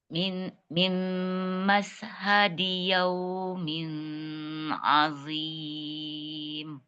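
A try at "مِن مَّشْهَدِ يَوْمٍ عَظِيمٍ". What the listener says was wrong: Hadi sempurnakan dulu kasroh tipis ya. Kemudian dia pendek. Mashhadi yaumin azim. Hadi di dulu kasrohkan dulu. Yaumin azim. Azim bukan azim. Azim.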